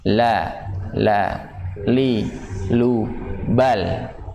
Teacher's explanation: Dari mana suaranya keluar? Dari sisi lidah, dari pinggir lidah. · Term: huruf lam